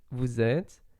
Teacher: So you just pronounce vous and then zet, like with a Z. And you don't pronounce the final ES.